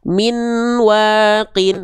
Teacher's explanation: Nah, itu tentu ketidaksempurnaan yang pertama dijelaskan di buku kita di poin pertama pada idgam bigunah kesalahannya itu suara nun atau suara n masih terdengar jelas